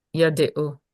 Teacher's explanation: This has to be audible schwa. Why? Because it's preceded by a long vowel.